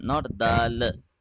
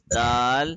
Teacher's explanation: don't produce the uh sound at the end